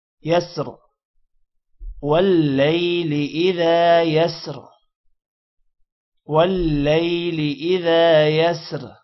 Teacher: واللیل لام کے بعد یا ہے، تھوڑا سا لمبا کریں گے۔